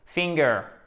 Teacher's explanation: Accent tonique sur la première syllabe